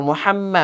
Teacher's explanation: মিমের মধ্যে তাজদিদ হওয়ার কারণে ওয়াজিব গুন্নাহ হয়েছে